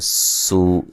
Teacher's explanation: سین کو باریک سیٹی سے، اور یہ واو مدہ ہے